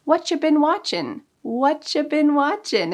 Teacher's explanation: you sometimes changes to cha. There are a lot of reductions for the word you in spoken fast English, so you can say, what you been watching?